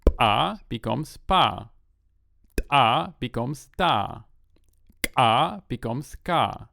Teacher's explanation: The 3 ejectives become stops.